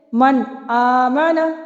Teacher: نون کو ظاہر کر کے پڑھا جا رہا ہے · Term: اظہار حلقی